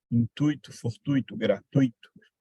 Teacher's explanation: sempre ditongo nunca é hiato não é gratuito for tuito são ditongos em que tipo de